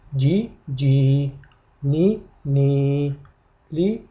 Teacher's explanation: kasradan so'ng sukunli ya kelsa, demak mana shu yerda i tovushi 2 harakat miqdorida cho'ziladi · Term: i tovushini 2 harakat miqdorida